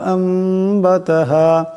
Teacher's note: নুন সাকিনের পর বা আসছে, এই নুন সাকিনকে মিম দিয়ে বদলায় পড়তে হবে, এটাকে কলব বলা হয়।